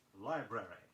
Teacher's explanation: Be sure you sound two R's in the word library